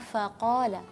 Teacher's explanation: Harus jelas fa, angin yang berdesisnya lepas, fa, terus juga infitah dan istifal, lidah yang datar, terus mulut yang kebuka. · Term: huruf fa